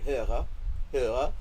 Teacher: the r is like a German r. It's a North German r. It's in the back of your throat.